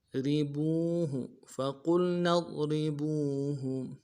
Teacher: را کو باریک ادا کرنا ہے، با کو واو کے ساتھ ملائیں گے، واو مدہ ایک مقدار میں کھینچیں گے، ہا کو نون سے ادا کریں گے.